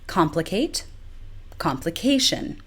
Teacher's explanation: the stress moved from the first syllable comp to the syllable directly before the ion suffix